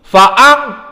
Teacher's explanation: makhrajnya dari khaysum, dan makna makhraj khaysum adalah makhraj yang dari hidung. Maksudnya dia keluar dari hidung. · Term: ikhfa